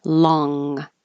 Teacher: this is an NG your tongue goes high in the back